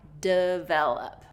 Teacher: that first syllable is reduced to that short I